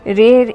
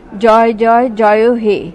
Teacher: স্বর ধ্বনিকে টেনে টেনে দীর্ঘ বা প্রলম্বিত করে উচ্চারণ করা হয় তা প্লুতস্বর